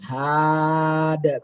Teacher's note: Kenapa daknya mantul? Karena dia huruf qalqalah.